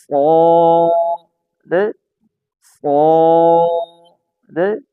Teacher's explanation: صاد جو ہے موٹا ہے، سین کی نسبت سیٹی کم ہے، یہ دیکھیں سین میں سیٹی ہے بریک ہے، صاد میں سیٹی سین سے کم ہے، صاد موٹا ہے۔